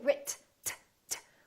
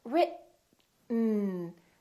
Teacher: When we have a T followed by an N, the T is held. So we hold our tongue right here behind our upper teeth and we don't release it.